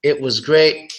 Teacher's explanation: when the it is followed by a consonant so native speakers make a stop sound